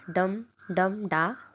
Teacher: Anapaest में unstress, unstress और stress, इन तीनों का पेयर रहता है। ठीक, अगर ये 5 बार पेयर है, डम डम डा, फिर डम डम डा, फिर डम डम डा, फिर डम डम डा, अगर इसको 5 बार बना दिया जाता है तो एनापेस्ट पेंटामीटर हो जाएगा वो।